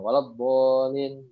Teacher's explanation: Huruf isti'la yang mad tabi'i gitu kan. Begitu ya, huruf isti'la yang berharokat fathah terus dia dibaca panjang. Nah, kan tebal tuh, walabbo ya, yang dianya panjang, walabbolin gitu.